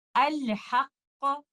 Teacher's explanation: پہلے والے لیٹر قاف کو میں تصادم یا ٹکراؤ کے ساتھ پڑھوں گی اور دوسرے والے لیٹر قاف کو میں قلقلہ کی طرح پڑھوں گی